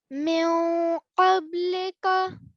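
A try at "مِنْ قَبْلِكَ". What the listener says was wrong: Yes, and you could hold it for a bit longer, okay? But that's good. I heard the gunna sound.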